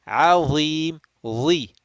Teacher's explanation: makhraj of dha is tip of the tongue being stuck out, slightly touching the upper front teeth